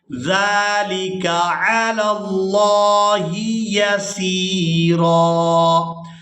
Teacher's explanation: ذال کو ہمیشہ ہی نرمی کے ساتھ ادا کرتے ہیں اور یہاں پر ہم نے کھڑی زبر کی وجہ سے کھینچ کر ادا کرنا ہے